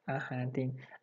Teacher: this H is providing the barrier between the two vowels coming together